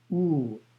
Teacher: the second syllable is you as in roof pronounced ooh but prolonged